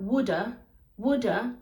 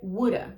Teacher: um britânico Muito provavelmente vai pronunciar a wooda wooda com esse som de D mesmo e um americano provavelmente pronunciaria wooda com esse Flap D